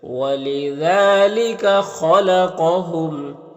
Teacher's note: خا اور قاف دونوں حروف مستعلیہ میں سے ہے تو پر پڑھیں گے